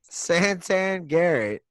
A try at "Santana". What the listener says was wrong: Santana, not Santan. Santana. Said Santan.